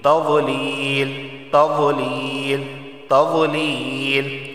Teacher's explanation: تضلیل واو کا مخرج ہے حافہ لسان، یعنی زبان کی کروٹ اوپر کے داڑھ سے لگے گی